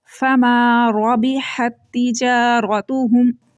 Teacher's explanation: را کے اوپر جب بھی زبر اور پیش آئے گی تو را کو موٹا کر پڑھنا ہے، منہ بھر کے اس کو پڑھنا ہے